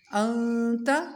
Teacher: نون پر ناک میں آواز لے جائیں گے، نرمی سے اخفا کریں گے